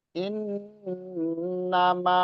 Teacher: In nama ini panjang 4 sampai 5 harokat. Ya, itu mad jaiz munfasil.